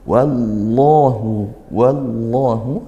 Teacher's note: Lafaz Allah dibaca tafkhim karena lafaz Allah didahului harakat fathah